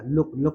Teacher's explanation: double O होने के साथ साथ में भी हमें कैसा निकल रहा है छोटा उ का उच्चारण निकल रहा है